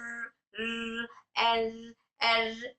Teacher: तिकार का मतलब है वाइब्रेशन। तो यहां पर हर र अदा करते वक्त में इसके मखरज में हल्का सा वाइब्रेशन होता है। जैसे र ये है सिफ़त तिकरार।